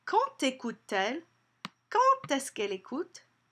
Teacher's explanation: Did you notice the liaison between the D and the vowel there? It sounds like a T.